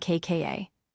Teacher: kka is the tense sound, tight and sharp with no air at all.